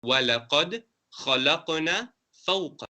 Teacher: kha is pronounced from the top part of the throat. You scrape it a bit.